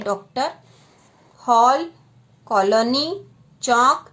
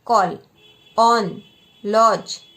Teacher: अंग्रेजी से आगत शब्दों के शुद्ध उच्चारण तथा अर्थ भेद के लिए हिंदी में आ और ओ के बीच की ध्वनि